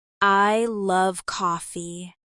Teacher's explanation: The stress is on love. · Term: sentence stress